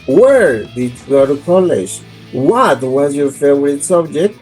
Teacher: we use falling intonation for questions with a question word. because the emphasis is in the question word.